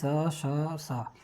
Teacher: अघोष संघर्षी स श स, ये अघोष संघर्षी हैं